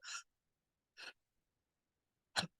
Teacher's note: El propio sonido de la H es como un jadeo